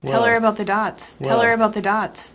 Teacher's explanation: it's not uncommon to drop the beginning H in unaccented words like her him and his if you do this always link it to the word before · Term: dropped H